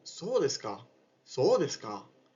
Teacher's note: en el segundo caso, se pronuncia con un tono descendente